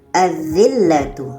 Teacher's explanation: lamnya tidak kita baca. Terus kepada huruf yang ada tasdid atau syaddah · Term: alif lam syamsiyah